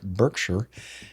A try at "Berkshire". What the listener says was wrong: No, it's not Berk. No.